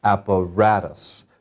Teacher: has four vowel sounds four syllables app a rat us so the third one gets the accent that means we say it louder than the others